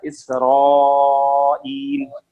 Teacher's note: را جو ہے موٹا ہوگا کیونکہ را پہ فتح ہے